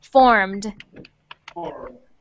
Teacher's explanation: when we add the ed onto that word, we don't say ed, we say just a little sound at the end like the d